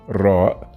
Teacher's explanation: ra, same as the R in English, but with more rolling sound